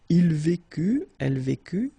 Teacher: final T not pronounced